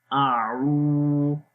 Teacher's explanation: سے، عین واو پیش عو، اعو، حمزہ کے اوپر زبر ہے، منہ کو کھول کر بھی پڑھیں گے، آ لمبا نہیں کریں گے